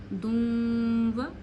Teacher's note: میں نے واو کی آواز ناک میں لے جائی اور ایک انگلی جتنی روکی